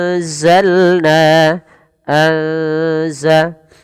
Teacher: Samarkan bunyi nun ke arah huruf zai karena di sini ada aturan ikhfa